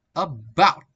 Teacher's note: the first syllable is weak, and the second syllable bout is strong and stress.